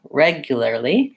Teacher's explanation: We have first syllable stress in regularly.